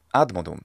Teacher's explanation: Now, this isn't necessarily wrong. Well, the penultimate stress rule would say that it should be ad modum, because the mo is a short syllable, and therefore the third to last syllable is where the stress should be